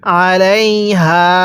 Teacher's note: আলাইহা এর মধ্যে আমরা তিন আলিফ টান দিব